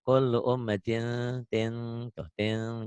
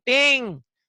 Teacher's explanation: Kullu ummatin, tin ada n-nya tapi bindeng emang. Ada i engnya tapi engnya nggak banget.